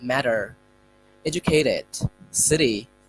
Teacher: we should instead of saying T we should say it as D